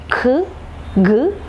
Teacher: Velar sounds, the back part of the tongue is raised towards the soft palate part.